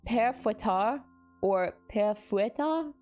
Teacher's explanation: with the first part like pear and the second part rhyming with tar, stressing the last syllable